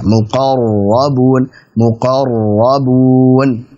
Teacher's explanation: Hati-hati saat kita mengucapkan ra yang bertasydid. Jadi kita haruskan getarannya.